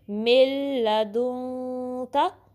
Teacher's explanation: تو اب من جو ہے نا اس کے نون ساکن کے بعد لام آیا ہے تو ادھر ادغام وداؤٹ غنہ ہوگا، یعنی آپ نے میم کو لام سے ملانا ہے اور ناک میں آواز نہیں لے جانی.